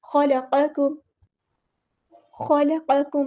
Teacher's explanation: ख़ा heavy letter है, लाम बारीक, क़ाफ हैवी, काफ बारीक और मीम पे टाइम नहीं देना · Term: एक बारीक और एक हैवी